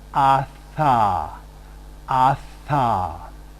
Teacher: the dental area involves a constriction between the tongue and the upper teeth